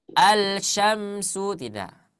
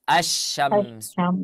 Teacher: ketika kita membaca ini kita tidak akan pernah menyebut yang namanya lam sukun di sana